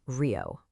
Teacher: the vocal cords produce this breathy guttural H sound. Technically, it's a voiceless uvular or glottle fricative depending on the speaker's exact articulation. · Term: voiceless uvular or glottal fricative